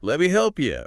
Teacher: the t often drops. The vowel in me weakens.